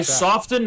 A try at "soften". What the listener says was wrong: why are they pronouncing the T in soften?